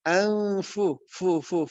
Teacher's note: Karena gigi seri bertemu bibir bawah bagian dalam huruf fa. Nun mati ketemu fa nu anfu sudah mengarah kepada makhraj huruf fa. anfusahum. Tidak anfusahum, tapi anfu, fu.